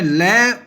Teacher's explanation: शवास वायु दोनों पार्श्व से बाहर निकलती है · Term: पार्श्विक